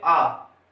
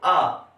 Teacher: आइन जो होती है इसकी आवाज होती है आ। ये थोड़ी सी गले से निकलती है